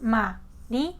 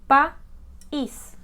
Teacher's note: dos vocales que estaban juntas pero fíjense que no están en la misma sílaba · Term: hiato